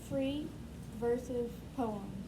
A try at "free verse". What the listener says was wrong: Free verse. There's no S at the end, so don't add it. Those first three letters are just like the first three letters of another word. Several other words.